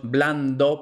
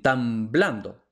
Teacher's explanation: la d como está justo detrás de una n permanece oclusiva